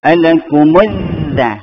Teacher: Maksud alif lam syamsiah ni maksudnya lam tu, lam itu, huruf lam tu dimasukkan ke dalam huruf syamsiah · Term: idgham syamsiah